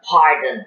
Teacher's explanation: Bilabial. The lips become very active when we produce the sound. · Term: plosive bilabial